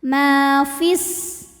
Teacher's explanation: Kalau wasal madnya gugur, fi-nya dibaca pendek, fis langsung masuk ke sin. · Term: takhalus bil hadfi